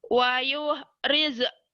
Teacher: rijnya keras, jim kan kol-kolah.